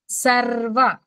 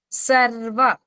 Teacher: ఇప్పుడు ఏది కూడా మొదటి లెటర్ మనకి సంయుక్తాక్షరం వస్తే గనక, ఇక్కడ ఇప్పుడు మనకి సర్వ అని ఉందనుకోండి, ఎలా పలుకుతామో ఒకసారి అబ్జర్వ్ చేసుకోండి. సర్వ ర్ అని పట్టుకుని ఒకసారి కొద్దిగా బిగి ఆపి వదులుతాము